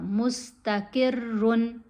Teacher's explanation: قاف کے نیچے زیر ہے اس لیے را کو موٹا نہیں پڑھا جائے گا